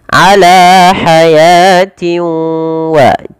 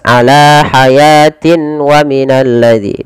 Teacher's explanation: Cara membacanya yaitu memasukkan tanwin ini kepada huruf wau. · tidak idgham kamil, masih menyisakan sedikit huruf nunnya. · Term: idgham bighunah, idgham naqis, idgham bi gunnah